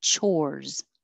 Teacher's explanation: make sure you have a ch at the beginning and a z z at the end